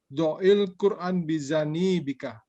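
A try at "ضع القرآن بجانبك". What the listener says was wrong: Yang panjang janya bukan ni. Bijani bika.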